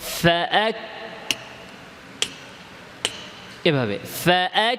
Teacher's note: হামস করব কাফের মাখরাজ থেকে, যেখান থেকে কাফ উচ্চারণ করি বাতাসটাও ওইখান থেকে বের হবে, এর সামনে থেকে না। · তো কাফের মাখরাজ থেকে কাফের হামস হবে, শিনের মাখরাজ থেকে না।